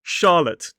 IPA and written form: ˈʃɑːlət (Charlotte)